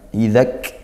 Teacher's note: ada kaf sukun kita tekan kemudian didesiskan ya